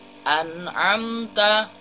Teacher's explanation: disitu an amta nun sukun bertemu dengan Ain Ilham halqi artinya nun sukun harus dibaca jelas bukan di dengungkan